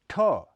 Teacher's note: अघोष ध्वनि है इसका उच्चारण स्थान मूर्धा माना जाता है ठ यह महाप्राण अघोष ध्वनि है इसका उच्चारण भी ट की तरह मूर्धन्य स्पर्श है